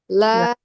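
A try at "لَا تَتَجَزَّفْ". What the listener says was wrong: Nah, jangan sampai taknya ketinggalan ya. Tajazzaf. Ada dua ya taknya.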